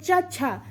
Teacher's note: ई तो किसका प्रयोग हो रहा है, तालव्य का प्रयोग हो रहा है। चा छा तो जीभ कहाँ लग रही है, तालव्य में लग रही है, तो तालव्य से इसका उच्चारण होता है